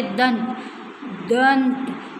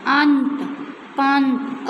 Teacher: सबसे पहले हम स्वर को बोलते हैं और बाद में नासिकीय ध्वनि का प्रयोग करते हैं। मतलब जो नाक से निकली हुई आवाज़ उसको बाद में प्रयोग करते हैं। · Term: अनुस्वार